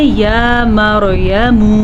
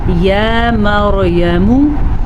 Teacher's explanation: بعض لوگ پڑھتے ہیں یا مریم، میم کو لمبا کر دیتے ہیں تو پھر غلطی ہو جائے گی